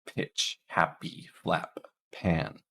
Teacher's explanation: in Pitch it's a little bit more Airy than in happy and in flap it's not really released · One is the p sound, and this is a voiceless sound.